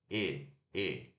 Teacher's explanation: close mid ainda é fechada, mas é um fechado intermediário, assim, quase aberto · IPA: /e/